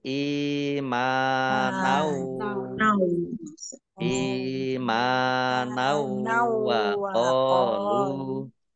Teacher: Ini fathah tanwin bertemu dengan huruf wawu. Idgham bi gunnah. Masuk dengan mendengung. Jadi wawunya ini mendengung.